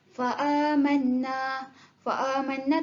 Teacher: Mad badal kita perlu baca tu 2 harakat.